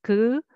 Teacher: imagining thin paper in front of you with little air you pronounce ㄱ